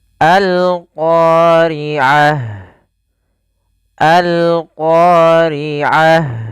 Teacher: namakan dengan alif lam qamariyah Apa itu alif lam qamariyah yaitu alif lam yang kita Tuliskan dan kita baca suara lamnya dengan jelas